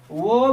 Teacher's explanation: वो का उच्चारण दंत और ओष्ठ हो जाएगा